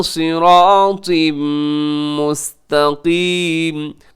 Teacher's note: सिरातिम, आगे जो सिरातिन के नीचे तनवीन है, तनवीन के बाद मीम यरमलून का इदगाम होगा गुन्ने के साथ। सिरातिम मुस्तकीम, आखिर में जो काफ है उसे आप मोटा रखिएगा, उसे बारीक ना कीजिएगा।